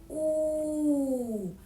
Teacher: язик вільно лежить у роті, губи витягнуті трубочкою. У повітря немає ніяких перешкод. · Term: звук у